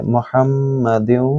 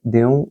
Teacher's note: میم مشدد ہے یہاں تھوڑا غنہ کریں گے